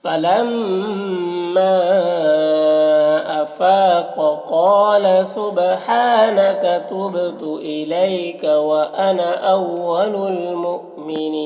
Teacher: وانا انا کے الف کو نہیں پڑھتے ہیں. اول المؤمنین یہاں پر حمزہ ساکنہ ہے واو کی شکل میں تو جھٹکا لگے گا، اور نین یہاں پر وقف کی صورت میں مد عارض وقفی ہوگا، تو اس طرح سے پڑھیں گے.